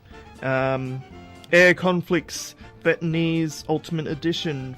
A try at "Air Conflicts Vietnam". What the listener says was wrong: It's Vietnam. No, not Vietnamese.